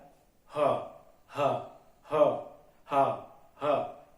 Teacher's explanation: अब आपका आता है हा, ये स्वर तंत्री से बोली जाता है, स्वर तंत्र से, इसे बोलते हैं स्वर तंत्रीय, ठीक है। ह ह ह ह ह, सिर्फ हवा निकलती है अंदर से, ठीक है, आपके स्वर से आती है।